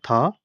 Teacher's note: स्पर्श दंत्य अघोष और महाप्राण वर्ण